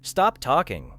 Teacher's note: But inside a sentence such as stop talking, the speaker may hold the P very briefly and move directly into the tea of talking. The word remains understandable, but the final sound is not fully released.